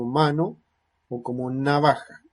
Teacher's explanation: humano o como navaja ese es el sonido que se genera punta de la lengua en los alveolos la resonancia nasal el velo del paladar baja y sonora